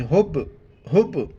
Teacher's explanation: ہا کو با کے ساتھ ملائیں گے اور با کے اوپر کلکلہ کریں گے ۔ کلکلہ کہتے ہیں کہ آواز کا منہ کے اندر گھومنا،